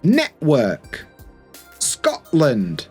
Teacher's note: So basically we replace the T with a little pause. Little pause when the T is at the end of a syllable and the next syllable starts with a consonant. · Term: glottal stop